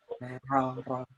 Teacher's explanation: Dan yang ro dia ada takrirnya, ada getarannya.